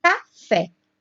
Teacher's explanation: Em café, a sílaba tônica é fé, que está lá na última sílaba.